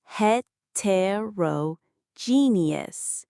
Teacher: The main stress is on that G syllable.